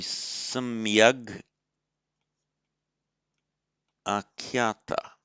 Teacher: with the final consonant k voicing, changing to a g before a following vowel